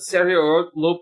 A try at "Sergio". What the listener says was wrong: you didn't pronounce the G